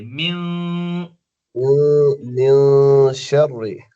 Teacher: मिन शर, नहीं, फिर मिन पढ़िए। शर्रि, नून की आवाज को नाक में ले जाइए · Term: गुन्ना